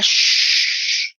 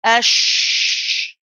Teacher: there's no uh protruding of the lips it's nice and flat